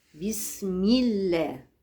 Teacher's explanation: الباء مكسوره باسمي والسين ساكنه فيها صفه الهمس